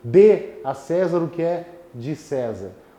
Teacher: O primeiro D, que é a forma verbal, muito mais forte do que a preposição de César. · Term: monossílabo tônico